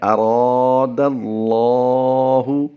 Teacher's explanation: اب غور کیجئے کہ لام ہمیشہ باریک پڑھا جاتا ہے، مگر جب لفظ اللہ اسم جلالت کے لام سے پہلے زبر یا پیش ہو تو لفظ اللہ کے دونوں لام پر یعنی موٹی آواز سے پڑھے جائیں گے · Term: لام تفخیم